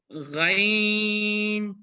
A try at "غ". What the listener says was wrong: غین کو موٹا پڑھنا، موٹے پڑھے جانے والے حروف میں سے ہے غین. غین نہیں پڑھنا.